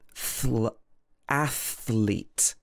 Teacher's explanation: So you have to go from the th to the l, thl, athlete.